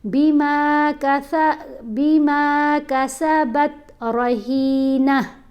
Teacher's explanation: یہ تا کے اوپر کلکلا نہیں ہوتا, آپ نے بہت آرام سے اس کو پڑھنا ہے